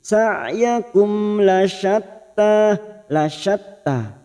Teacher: mim sukun bertemu lam idhar safawi dibaca jelas tanpa mendengung. Sa'yakum lasyatta masuk pada huruf ta yang bertasdid lasyatta, tanya kita panjangkan 2 harokat mad tabi'i.